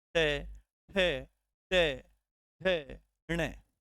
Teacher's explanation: ट वर्ग का स्पर्श होता है कहां मुर्धा के पास